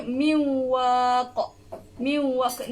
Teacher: Nun dia ni tak bunyi nun, tapi dia jadi dengung.